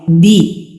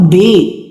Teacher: बे बे नहीं, इसे आपने इंग्लिश के बी की तरह पढ़ना है, ठीक है। इंग्लिश लेटर जो बी होता है ना उसकी तरह जेर मारूफ होनी चाहिए, मजहूल नहीं होनी चाहिए। हरकत को मजहूल होने से बचाना है आपने, ठीक है।